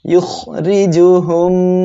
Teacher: এখানে র এর নিচে জের ছিল, এর জন্য র অক্ষরটা আমি চিকন করিয়া পড়েছি